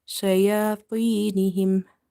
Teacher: Ta is from the musta'aliya letters. These are such heavy letters. Under any condition, we have to make it heavy.